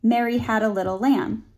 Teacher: the primary vowel throughout that phrase is an a vowel which we know is a lower mid front vowel